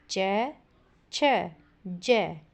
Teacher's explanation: इनके उच्चारण में जीभ का अगला भाग ऊपर उठकर ऊपर दांतों के मसूड़ों से ऊपर तालु को स्पर्श करता है